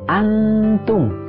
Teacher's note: nun sukun bertemu dengan ta hukumnya adalah ikhfa artinya samar dibacanya dengan dengung ditahan dulu dua harakat